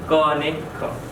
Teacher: કંઠ્ય હોય અને અઘોષ હોય એવા વર્ણો